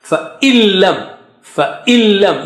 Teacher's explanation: you don't pronounce noon there, noon with sukoon